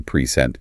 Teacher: >> But if you shift your diaphragm, push just a fraction of a second later and hit the second syllable present, it becomes a verb, an action.